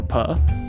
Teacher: exclusively we can also describe a manner of articulation for puff a stop because the airflow through the mouth is stopped completely and then released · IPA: [p]